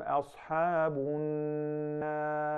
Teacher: Ya Sheikh, he just said an-nar and you recited the ra' fattened, mufakhama